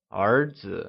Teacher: it is pronounced using the mid Rising tone